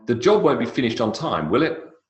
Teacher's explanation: question tags can also be affirmative statements. And so the intonation goes down.